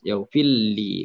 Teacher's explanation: ra bertemu dengan lam. Idgham kabir, masukkan ra ke dalam lam.